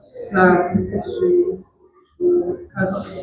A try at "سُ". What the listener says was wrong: Nah, ini hati-hati jadi sui, sui. Nah, itu pangkal lidahnya naik tuh, jadi suara tebal. Dia tipis.